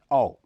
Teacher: इसके उच्चारण में भी जीभ का पिछला हिस्सा ऊपर की तरफ उठता है। दोनों होंठ उच्चारण के समय गोल होकर बाहर की ओर निकलते हैं। इसके उच्चारण में होंठों के बीच का हिस्सा कम खुला रहता है।